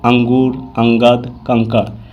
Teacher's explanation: अगला है अनुस्वार। यह स्वर के बाद आने वाला व्यंजन है जिसकी ध्वनि नाक से निकलती है